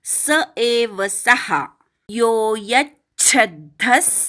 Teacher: विसर्गाचा स असा उच्चार करायचा